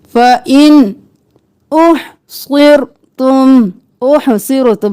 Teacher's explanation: यहाँ पर इख्फा नहीं करेंगे इजहार करेंगे फ़इन नून को जाहिर करके पढ़ेंगे